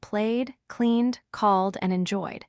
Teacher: When the last sound of the verb is voiced, we pronounce the ed d as d. Voiced means the vocal cords vibrate when you make the sound. · If you touch your throat, you will feel vibration when you say the final sound of these words. That vibration tells you it is voiced.